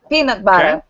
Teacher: it's peanut butter stress on the first word